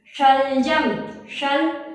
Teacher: ऊपर हमारी जीभ टकरा रही है तालु पे, इसलिए इसका नाम है तालव्य श